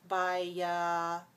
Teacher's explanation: So notice when we say bio as a short form or as a prefix, we say O, bio, but when we say it in the word, we change the O to a. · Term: schwa sound